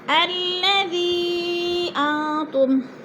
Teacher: جوڑ کر پڑھیں گے۔ الذی انتم، زی پہ مد منفصل ہے، حروف مدہ کے بعد حمزہ دوسرے کلمے میں آ گیا ہے تو مد منفصل، 4 الفی مد ہے، اس کو 4 الف کے برابر ہم نے کھینچ کر پڑھنا ہے ، اور انتم، ان پہ اخفا ہو رہا ہے، نون ساکن